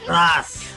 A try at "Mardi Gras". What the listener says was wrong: Mardi Gras. There's an R in there. Mardi Gras.